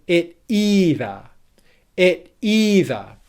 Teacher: can you hear how that syllable e in either is more stressed also than the syllable before it